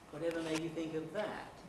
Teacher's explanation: Whatever made you think of that? That is being stretched out a bit in time, has a big pitch movement on it. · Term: nuclear tone